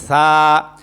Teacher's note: জিহ্বার আগা সামনের উপরের 2 দাঁতের আগার সঙ্গে লাগায়া সা অক্ষর উচ্চারণ হয়। সা অক্ষরটা উচ্চারণ করার সময় পাতলা হবে।